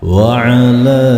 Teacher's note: Berikutnya pada lafaz wa'ala, pada lafaz wa'ala, lam di sini berharokat fathah yang berdiri dan di atas lam ada benderanya, maka ini termasuk bacaan mad jaiz munfasil. Panjang bacaan mad jaiz munfasil 2 sampai dengan 5 harokat.